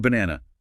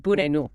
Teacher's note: The stress is on the middle syllable, N-A, the first A and the last A. They're not pronounced as a clear sound. They collapse into that weak schwa.